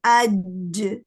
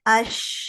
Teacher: جیم, شین اور یا, یہ وسط اللسان سے ادا ہوتے ہیں, مڈل پارٹ آف ٹنگ